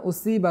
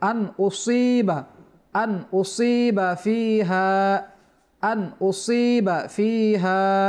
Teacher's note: সাদের পর আবার ইয়া সাকিন রয়েছে যার কারণে এক আলিফ টানো হবে